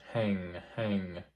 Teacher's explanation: NG as in the end of the word hang yeah so with the NG you should feel the contact of the arch of your tongue somewhere in the middle of the mouth